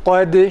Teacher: Normalde dal harfinde kalkale sıfat olduğundan dolayı cezimli halinde biraz sarsıntılı bir ses tonuyla okuyoruz